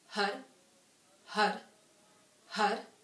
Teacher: When HAR starts, the H starts at the navel, and the R, or the D sound, or the R sound, whatever you want to call it, you flick your tongue right behind the teeth where the ridges are. So if you take the tip of your tongue and you feel right behind the teeth, that's where you want your tongue to connect.